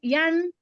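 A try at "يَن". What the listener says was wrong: আচ্ছা, ইন হয়ে যাচ্ছে একটা জিনিস খেয়াল করেন, আপনি কি ইয়া ফাতহাতিন আন বলছেন না ইয়ান বলছেন?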